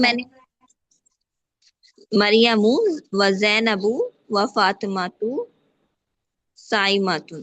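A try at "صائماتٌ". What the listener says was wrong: हम्म, साइमातुन, okay.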